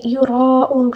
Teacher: را کو پر اور مد لازم بھی ہے، مد لازم کو 5 الف کے برابر کھینچ کر پڑھنا ہوگا. یراؤون آخر میں جو واو مدہ ہے اس کو تقریباً 3 الف کے برابر کھینچ کر پڑھیں گے.